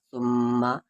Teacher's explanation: میم پر تشدید ہے یعنی یہاں پر غنہ ہوگا